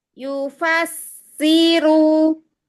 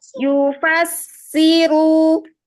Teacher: Sin-nya itu jangan tamlit, jangan melar.